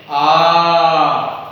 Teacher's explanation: विपरीत स्वर में क्या होता है, जीभ सबसे कम ऊपर उठता है और मुख का भाग पूरा खुला रहता है, इसको बोलते हैं विपरीत स्वर। आ, मुंह खुल गया, जीभ हल्का से ऊपर गया, ये देखिए जीभ मुंह खुल गया, जीभ थोड़ा सा ऊपर उठा, ये विपरीत स्वर।